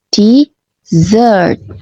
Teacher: Desert penekanannya di suku kata kedua. Desert. Sementara desert di suku kata pertama desert. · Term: penekanan suku kata